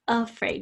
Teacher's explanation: you can hear that schwa really clearly in afraid and ago, the first syllable